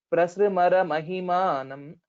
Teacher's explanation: there is a stress on pra because of a sanyuktakshara